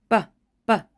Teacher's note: your usual aspiration which is that air friction or that puff of air that comes after you create that consonant